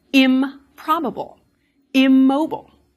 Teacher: when in comes before a word that starts with a bilabial sound, you will get im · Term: assimilation